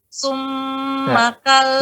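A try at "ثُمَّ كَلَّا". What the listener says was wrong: Ya, sum. Itu lidah di dalam. Coba dikeluarkan lidahnya, Bu. Dikeluarkan, bertemu dengan gigi seri atas. Dikeluarkan, bertemu dengan gigi seri atas. Ya, sum. Ketika dikeluarkan ujung lidahnya, sedikit saya dikeluarkan, bertemu dengan gigi seri atas, maka berbeda suaranya dengan yang awal tadi. Sum. Digetarkan di ujung, baru dibalikkan di mim. Sum, gitu.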